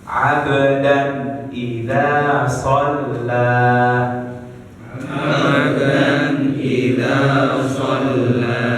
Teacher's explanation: Cara bacanya jelas dan terang ya. Tidak ada samar-samar, tidak ada penahanan, tidak ada dengung ya, jelas. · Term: izhar